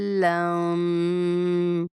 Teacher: ज़ाद को पुर भी पढ़ेंगे, मद भी करेंगे 5 अलिफ के बराबर और उसके बाद हम लाम की तशदीद और गुन्ना को बरकरार रखते हुए लफ्ज़ को पूरा करेंगे।